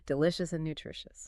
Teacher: Both end with that soft, airy sh sound